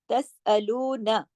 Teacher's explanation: सीन को खींचा क्योंकि उसके ऊपर मद है, तसाअलून। लू को खींचा दो हरकत वाव मद्दा के साथ · लू को खींचा दो हरकत वाव मद्दा के साथ, तसअलून। अब नून को ज्यादा नहीं खींचना, सिर्फ एक हरकत पढ़ेंगे